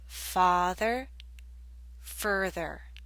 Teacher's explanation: The ah in father makes you open your mouth more.